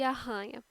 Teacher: r forte porque utilizamos a parte posterior da língua a para produção